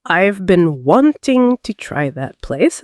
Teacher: In the sentence, I've been wanting to try that place. The stressed words are been, wanting, try, place. Everything else flows quickly between these stress points.